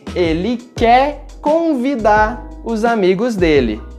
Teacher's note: nós simplesmente não pronunciamos a letra R final.